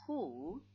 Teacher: the one that is raised is back of the tongue, and it is raised high. If you compare picture number 2 and picture number 3, both are raised high, but this is the back of the tongue which is raised high, and this one, front of the tongue which is raised high. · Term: back vowels